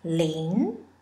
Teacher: Ling is a second tone, a rising tone.